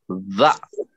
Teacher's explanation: اور سا کا مخرج جو ہے نرم ہے، سا کا مخرج جو ہے نرم ہے، جبکہ زا کا جو ہے، زا کا، اس کو ادا کرتے وقت ذرا زور سے ہوا نکلتی ہے، ٹھیک ہے، ذرا زور سے، زا، ٹھیک ہے، زا، زا ہے نرم، یہ بھی سا کا مخرج نرم ہے، اور زا کو ادا کرتے وقت ذرا زور سے ہوا نکلتی ہے